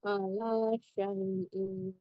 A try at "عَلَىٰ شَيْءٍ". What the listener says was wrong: Ala syai. Kalau kasroh tanwin yang tidak dibaca, yang dibaca hanya fathah tanwin ya, fathah tain ya, dibaca a. Dibaca ematnya dibaca, tapi kalau kasroh tidak dibaca ya. Ala syai gitu bacanya, ulangi.